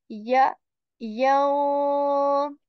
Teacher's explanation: Ya letter, middle portion of the tongue is raised towards the palate.